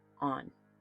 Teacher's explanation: on starts with a soft ah and ends with a clean N, a totally different phonetic structure.